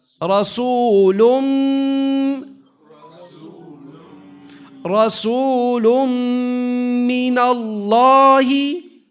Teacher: And we hold it for 2 harakat. You hold it. It's a gunna.